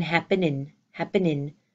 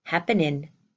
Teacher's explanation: you don't hear the G at the end of my happening you hear happenin we got to talk about what's